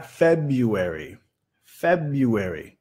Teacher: Otra vez el primer sílabo estresado. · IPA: ˈfebjəˌweri